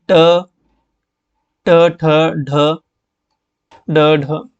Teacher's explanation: तो मूर्धा में आएगा ट वाला